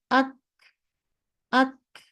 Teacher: কাফে হালকা করে দিয়ে ছাড়িয়ে দিবেন, জাস্ট অডিবল হবে যে আচ্ছা একটা বাতাস ছিল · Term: কাটিং সাউন্ড